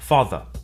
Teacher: notice that the final R sound is not pronounced in British English father ends in a simple schwa vowel like father and in car the vowel sound is lengthened in